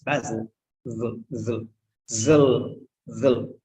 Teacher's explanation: Very short sound in English. That's schwa sound, we call it. Schwa. Okay.